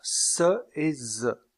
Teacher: il y a un resserrement du passage de l'air au niveau des alvéoles avec la pointe de la langue en bas. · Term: constrictives alvéolaires